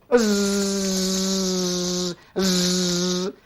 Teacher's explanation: Tapi zai ni anak berbeza bunyi dengan sin. Zai ada getaran.